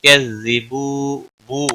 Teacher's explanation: ہا کے نیچے کھڑی زیر ہے 1 الف کے برابر کھینچ کر پڑھیں گے. تو کذبو بو واو مدہ ہے 1 الف کے برابر کھینچ کر پڑھیں گے